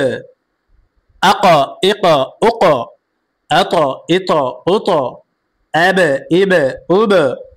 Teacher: প্রতিধ্বনি আওয়াজ দিয়ে পড়তে হবে, ধাক্কা দিয়ে পড়তে হবে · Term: কলকলার